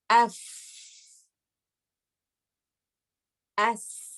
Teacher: When the vocal cords are open, when I'm saying F, when I'm saying S, the vocal cords are open. And when they are open, there's a flow of air. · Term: al-hams